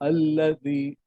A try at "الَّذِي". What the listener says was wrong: الذي को लंबा कीजिए ठीक है अच्छा पढ़ रहे हैं